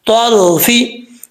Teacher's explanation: रा क्योंकि साकिन है, रा साकिन से पहले जबर हो तो रा पुर पढ़ा जाता है